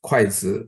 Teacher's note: The second syllable doesn't have stress